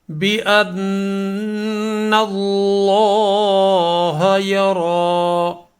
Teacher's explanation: بأن یہاں یہ غنہ کے ساتھ پڑھا جائے گا، نون مشدد ہے